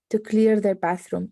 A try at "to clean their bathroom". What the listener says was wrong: Not clear, but to clean.